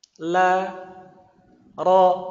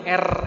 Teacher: Sedangkan ro di dalam bahasa Arab itu cuman sekali getarannya. Sedangkan R di bahasa Indonesia itu getarannya berkali-kali.